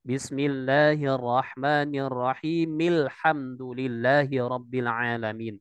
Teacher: Bismillahirrahmanirrahim dengan kasroh. Bertemu dengan lam ta'rif di situ alhamdu. Jadi dia langsung masuk ke dalam huruf lamnya